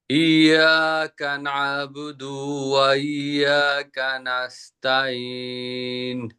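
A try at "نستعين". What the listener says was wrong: নাস্তাঈন আইনটা ডাবাইতে হবে, আইনটা। নাস্তাঈন।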